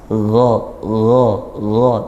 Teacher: gha huruf ghain dia tebal. Nah, selain dia makhrajnya juga di tenggorokan paling ujung paling atas, gha, tapi tanpa aliran nafas ya.